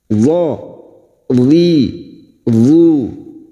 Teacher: tepi lidah nempel pada gigi geraham atas boleh kiri boleh kanan senyamannya